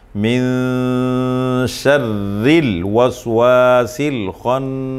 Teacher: ناک میں آواز چھپائیں گے 1 الف کے برابر. آگے نون مشدد آ رہا ہے خناس کے اندر تو حرف غنہ ہے، غنہ ہوگا